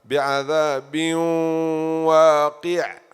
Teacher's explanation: Tanween followed by waw, you do idgham ma'al ghunna.